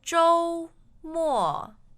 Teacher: the tones are first and fourth